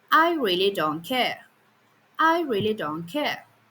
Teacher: Here the voice moves a bit during I really don't but then care starts higher and drops sharply. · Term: fall, the fall